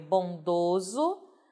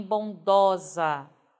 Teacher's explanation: você quando for mal feminino veja que a vogal tônica se abre